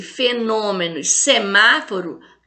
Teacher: todas são acentuadas na antepenúltima sílaba ou então são proparoxítonas